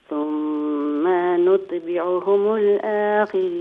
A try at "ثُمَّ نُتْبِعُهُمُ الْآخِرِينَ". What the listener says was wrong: اچھا، ثم میں میم کو لمبا نہ کیجئے. ثم نتبعهم الآخرین. یہ جو آ نہیں ہے، آخرین. ہاں، کیونکہ آنکھ جو ہے نا یہ فل ماؤتھ سے نہ ہو بلکہ باریک آواز.